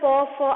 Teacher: दोनों होठों को स्पर्श करते हुए स्वर निकल रहा है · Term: ओष्ठ